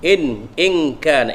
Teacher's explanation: nun mati dengan kaf ikhfa haqiqi, kita dengung